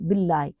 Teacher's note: باللہ ہاں ہلکی لیٹر ہے، حلق سے چسٹ میں نکلا، تو لام کے اوپر کھڑا زبر ہے اور اس کو ایک الف اس لیے سٹریچ کیا · تو لام اللہ عز و جل کو باریک پڑھیں گے کیونکہ اس سے پہلے زیر آ گئی ، باللہ ہاں ہلکی لیٹر ہے، حلق سے چسٹ میں نکلا،